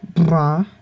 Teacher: you have the voiced bilabial trill